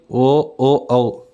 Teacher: కంటి వష్టాల నుంచి ఉద్భవించేవి ఓ ఓ ఔ